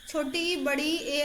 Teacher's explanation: अग्र आगे से बोला जाता है